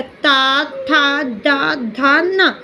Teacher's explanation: इन्हें बोलने में अपनी जिह्वा डायरेक्ट सामने के दांतों से टच होती है। बोलकर देखो, सामने के दांतों से टच होती है। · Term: दंत्य